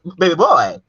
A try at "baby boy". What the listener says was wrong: See, you sent your baby boy to country. You gotta, baby boy. It's like a yee. You gotta bring it back up. No, no. said baby boy. You said baby boy. That's country. Like boy.